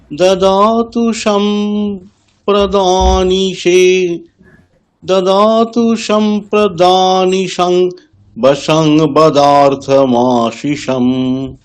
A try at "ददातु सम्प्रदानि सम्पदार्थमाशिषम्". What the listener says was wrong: একদম।